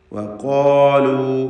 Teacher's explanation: ഖാഫും അതിൻ്റെ ദീർഘാക്ഷരമായ അലിഫും. ഇതിനെ തഫ്ഖീം ചെയ്ത് തടിപ്പിച്ച് സ്വരഭാരത്തോടെ ഉച്ചരിക്കുക. അലിഫ് വന്ന് ദീർഘിപ്പിക്കുന്ന കാരണത്താൽ ഏറ്റവും പൂർണ്ണമായ തഫ്ഖീമാണ് അതിനുണ്ടാവുക.